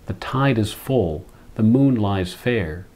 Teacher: a little sonic pattern is established in the repetition of F sounds